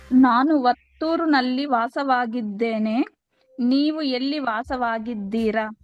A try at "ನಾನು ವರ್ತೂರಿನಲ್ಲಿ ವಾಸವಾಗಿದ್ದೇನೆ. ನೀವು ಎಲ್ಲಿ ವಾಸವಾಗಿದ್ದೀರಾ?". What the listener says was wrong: Very good. Next.